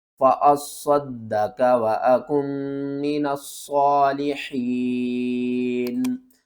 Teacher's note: فَأَصَّد، صاد کو بھی 2 بار پڑھنا ہے، دال کو بھی 2 بار پڑھنا ہے، اور صاد کو موٹا کر کے پڑھنا ہے، دال کے اوپر ایک بار قلقلہ کریں گے، دوسری بار زبر کے ساتھ پڑھیں گے